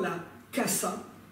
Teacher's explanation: le son S, est resté à son état primitif d'alvéolaire voisé, se prononçant tel que notre Z français